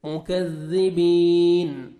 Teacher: یا مدہ 1 سیکنڈ با کو کھینچنا ہے اور نون ساکن ہو جائے گا جب سٹاپ کریں گے